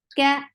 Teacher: Ka is light and without hams.